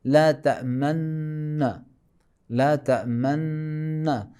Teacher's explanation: ہونٹ تھوڑا سا گول کریں گے تو ضمہ کی بو خود بخود آئے گی